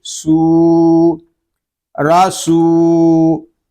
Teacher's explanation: واو ساکن سے پہلے پیش آ گیا ہے، ہم سین کو ایک الف تک کھینچ کر پڑھیں گے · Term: واو مدہ